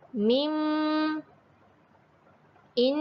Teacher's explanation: akan terasa getaran dalam hidung bila huruf mim dan huruf nun ini dibunyikan